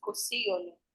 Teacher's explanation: You can just join it and let everything glide. Kò sí ìyọnu. So we delete an I.